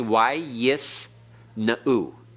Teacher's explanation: a pathic followed by a yod, even when the yod is normally used as a consonant, is pronounced I